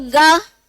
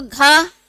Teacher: अब बोलो ग, कम हवा का संचरण हो रहा है, और बोलो घ, तो ज्यादा हवा का संचरण हो रहा है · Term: महाप्राण